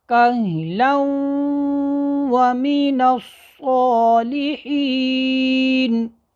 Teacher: ادغام بھی ہو رہا ہے اور غنہ بھی ہو رہا ہے